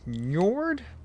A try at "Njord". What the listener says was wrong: You probably don't pronounce the N. Probably just Yord. And Jade was, pronounced as Y.